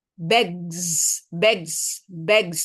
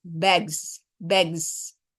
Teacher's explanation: Walaupun terakhirnya S, tapi saat proses asimilasi berlangsung, ketika bunyi G dengan S digabung, itu di tengahnya pas pertemuannya itu bunyinya jadi buzzing sound.